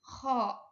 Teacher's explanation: makharijul hurufnya itu kho itu ada di langit-langit belakang.